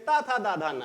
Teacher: जैसे का, खा, गा, घा, गंगा का उच्चारण स्थान कंठ है, वैसे ता, था, दा, धा, ना का उच्चारण स्थान दंत्य है